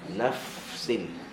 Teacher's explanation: Mana fa dia hilang, tenggelam dalam sin, kerana kedua-duanya ada sifat hams. Okay, maka berikan hams pada fa dulu sebelum masuk pada sin.